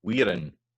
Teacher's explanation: Then we've got weir, so the R's in there, so that's a long note, and it takes a lang vowel in there. Wearin, so the in is unstressed, and it's on an unstressed beat, and it's on a shorter note